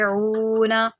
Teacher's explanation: عین ہے اس کو حلق سے نکالے، عونا، اس کو اونا نہیں پڑھیں گے، ٹھیک ہے۔